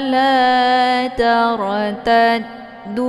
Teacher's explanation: La dibacanya panjang, boleh 4 atau 5 kali ketukan. Ini dinamakan dengan mad jaiz munfasil karena ada mad tabi'i bertemu dengan hamzah di lain kalimat.